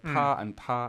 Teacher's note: I hear first tone, but the pitch of the first ta is a higher pitch than the second ta · 他 怕 他 She's like ta and ta. It's still first tone, but the second ta is slightly lower.